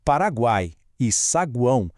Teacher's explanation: É uma sequência bem específica: semivogal, depois a vogal forte no meio e outra semivogal para fechar. E assim como no ditongo, esse trio todo permanece unido na mesmíssima sílaba. · O som uai ou uão é pronunciado de uma vez só, num único pulso de voz. Lembra? São três sons de vogais trabalhando ali em total harmonia. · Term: tritongo